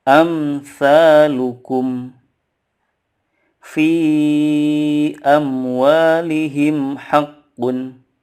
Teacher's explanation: mim sukunnya tidak boleh dipanjangkan gunahnya. Perlu diketahui teman-teman sekalian bahwa mim sukun itu ada salah satu sifatnya itu tawasud. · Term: izhar syafawi